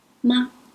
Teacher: And the neutral tone, ma. You read it lightly. It's a weak syllable.